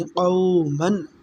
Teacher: قاف واو زبر قو، میم دو زبر من، قومن۔ آگے غین حروف حلقی ہے تو ہم تنوین پر یعنی قومن پر غنہ نہیں کریں گے۔